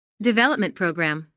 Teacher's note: Since these two words make a compound noun, the main stress falls on development.